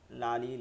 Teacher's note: উপর দাঁতের মাড়ির সঙ্গে লাগায় সামনের উপর দাঁতের মাড়ির সঙ্গে লাগায় সামনের উপর দাঁতের মাড়ির সঙ্গে লাগাইয়া লাম উচ্চারিত হয়